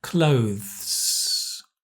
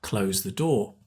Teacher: You have to have the th because otherwise it sounds like close. Close the door, right?